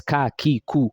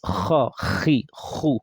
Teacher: Kaf is, you know, it's coming out from the tongue, the back of the tongue.